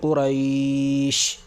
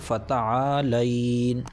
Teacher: حرف لین کے بعد سکون وقف کی وجہ سے آ رہا ہے، لہٰذا یہاں پر مد ہوگا اور 3 الف کے برابر کھینچ کر پڑھا جائے گا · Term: مد لین عارضی وقفی